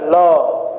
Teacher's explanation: या उसके मध्य हिस से हवा का क्या हो रहा है बगल किनारे से उसका उच्चारण हो रहा है · ल तालु में जाके चिपकेगी, और बगल से जब तक उच्चारण रहेगा ल का, बगल से किनारे से हवा का निष्कासन होगा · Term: पार्श्विक व्यंजन